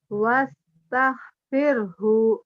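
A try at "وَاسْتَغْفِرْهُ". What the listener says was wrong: Jangan tah. Orang Jawa gitu ke H, mahrib. Itu ngasar, ngasar mahrib. Wastaghfirhu, wastaghfirhu.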